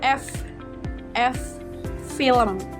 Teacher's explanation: Suara F adalah spiran bibir gigi, sama ya seperti V.